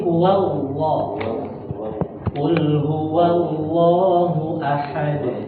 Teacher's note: huruf lam pada lamdul jalalah harus dibaca tebal karena didahului fathah. Jangan sampai bibir kita ini kurang dibuka.